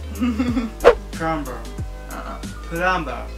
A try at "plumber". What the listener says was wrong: Nope. Try saying it without the B. Without the B, not without the ER. Plum.